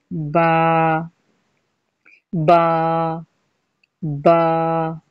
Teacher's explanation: دونوں ہونٹوں کے گیلے حصے یعنی تری والے حصے آپس میں مل کر جدا ہوں تو با ادا ہوتا ہے، یعنی کہ دونوں ہونٹ آپس میں ملیں گے با میں، اندر کے گیلے حصے۔